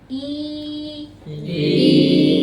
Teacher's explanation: Ketika kasroh, turunkan rahang, tengah lidah naik karena dia muaranya kayak huruf ya. I. Kalau dia datar itu jadi laza Indonesia.